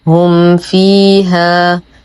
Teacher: وأظهر ما تكون الميم عند الفاء لتقاربهما من المخرج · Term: إظهار شفوي